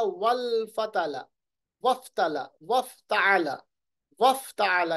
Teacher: یعنی واو کی زبر ڈائریکٹلی فا کے ساتھ ملے گی، اور یہ حمزۃ الوصل یہاں گر جائے گا